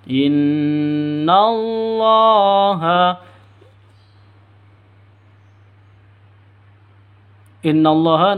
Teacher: Nun tasydidnya berdiri sendiri jadi gunah musyaddadah dengung dua ketukan